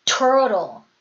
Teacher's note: 자, 이때 트는 강세가 없는 트예요. 자, 강세가 없는 트는 어떻게 해주냐면요. 역시 디귿이나 리을 소리가 나온다. 한국어의 디귿이나 리을 소리예요.